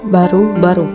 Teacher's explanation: B, hidup, oral, bilabial, klosik